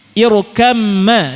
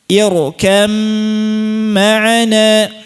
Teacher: selain kamil, selain idgham ba-nya dihilangkan juga digunnahkan. Berarti cara prakteknya ba-nya hilang. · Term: idgham mutaja nisain